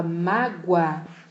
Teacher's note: eu saio do som fraco que é o u para o som mais forte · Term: ditongo crescente